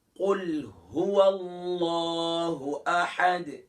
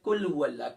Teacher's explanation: اکثر پڑھتے ہیں کل هو اللہ، کل نہیں ہے، قوف موٹا ہے